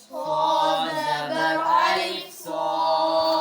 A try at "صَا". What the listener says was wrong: جو صاد موٹا پڑا نا اس کے ساتھ آگے جو الف ہے نا گرین کلر کا اس کی بھی آواز سو موٹی ایسے باریک نہ ہو. سو ہے اس طرح نہیں ہونا چاہیے. سو آپ کے ہونٹ گول کیوں ہو رہے ہیں؟